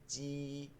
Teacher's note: জিমের মূল মাখরাজ থেকে উচ্চারণ হচ্ছে জিহ্বার মধ্যখান